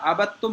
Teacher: یہ دال یہاں پہ سائلنٹ ہو گیا کیونکہ تا دال تا ان کا تینوں کا مخرج ایک ہے، اور جب ایک ساتھ یہ مشدد آئے گا تو اس کے ساتھ میں تھوڑی مشکل ہوتی ہے ادا کرنے میں.